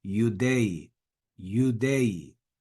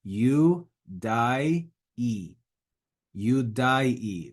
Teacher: the diphthong AE, pronounced as one vowel sound, E in Church Latin or I in Classical Latin.